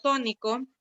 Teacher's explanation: la palabra tónico lleva el acento en la antepenúltima sílaba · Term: esdrújula